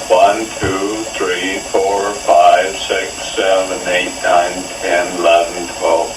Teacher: speech that is monotone with breathy sounds